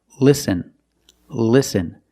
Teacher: when you have an L at the start of a word before a vowel that's a light l listen listen the tongue is touching the roof of your mouth